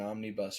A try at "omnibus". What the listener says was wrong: Omnibus. Why'd you say it like that? You said it like a single bus. Like Omnibus. Omnibus. Omnibus.